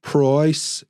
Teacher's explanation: in a Birmingham accent, it's more like price. It's kind of drawn out, price, price, and it's kind of flat. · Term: flat vowel sounds